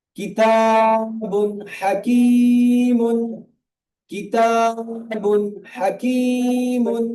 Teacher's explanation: আইন হাইন খমজা হা আইন হাইন খ এই ছয়টির মধ্য থেকে যদি কোন একটি অক্ষর আসে যদি কোন একটি অক্ষর আসে তাহলে তানবিন ও নুন সাকিনের আওয়াজকে তানবিন ও নুন সাকিনের আওয়াজকে বিনা গুন্না তাড়াতাড়ি পড়তে হয়। বিনা গুন্নায় জাহির করে তাড়াতাড়ি পড়তে হয়। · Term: ইজহার